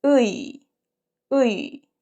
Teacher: So the movement is back to front.